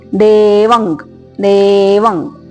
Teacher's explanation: ಅನುಸ್ವಾರ ಕ ವರ್ಗದ ಅನುನಾಸಿಕ